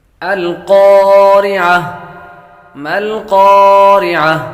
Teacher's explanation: قاف حروف مستعلیہ میں سے ہے، اس لیے اس کو پر کریں گے